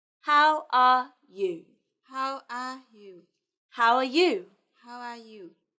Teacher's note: let's look at your intonation on how are you how are you it should go down at the end